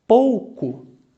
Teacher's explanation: O contrário é o ditongo decrescente. Começa pela vogal que é mais forte e termina pela semivogal, que é mais fraquinha.